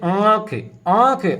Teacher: जो वायु निकलती है वह मुख से भी निकलेगी और नाक से भी निकलेगी तो वह स्वर क्या कहलाता है अनुनासिक स्वर कहलाता है या